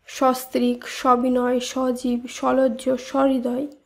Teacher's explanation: প্রত্যেকটি শব্দের উচ্চারণেই অধ্বনি বিবৃত উচ্চারণ রূপে উচ্চারিত হয় অর্থাৎ সস্ত্রিক সবিনয় সজীব সলজ্য স্বহৃদয় এই শব্দগুলিতে অধ্বনি অধ্বনি রূপেই